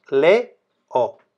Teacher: cuando se juntan las dos abiertas por ejemplo leo en este caso es un hiato y como dijimos los datos van separados le o a la